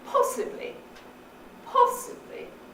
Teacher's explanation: It's going down, isn't it? There's something falling going on there.